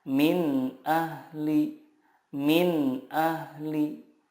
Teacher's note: huruf-huruf izhar di sini makhrajnya adalah dari tenggorokan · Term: izhar halki